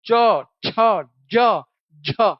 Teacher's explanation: क्योंकि इनमें जीभ स्पर्श करती है और साथ ही साथ घर्षण होता है। · देखो वायु घर्षण के साथ बाहर आ रही, च, छ, ज, झ, तो बीच बीच में घर्षण वाले जुड़े हैं। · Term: स्पर्श संघर्षी